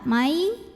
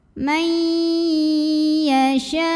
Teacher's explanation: Karena ada nun sukun yang bertemu dengan huruf ya. Maka nun sukun ini dileburkan atau dimasukkan ke ya, mai disertai dengung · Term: idgham bi gunnah